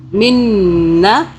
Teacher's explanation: نون کی پہلی آواز ساکن اور دوسری آواز زبر کے ساتھ